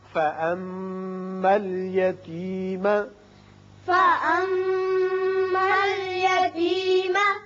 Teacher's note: میم مشدد ہے غنہ کریں گے